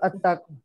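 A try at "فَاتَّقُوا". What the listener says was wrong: इत्तक, ठीक है इत्तक, अत्तक नहीं कहना, फा इत्तक, फा इत्तक नार अल्लती वकूदुहा।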